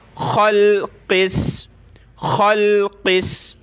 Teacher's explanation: ख़ा और क़ाफ़ को हमने मोटा करना है, ये मोटे हरूफ में है